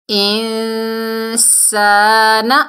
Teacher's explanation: اس میں نون کا کچھ حصہ ظاہر ہوتا ہے، کچھ حصہ چھپا ہوا ہوتا ہے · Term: اقفا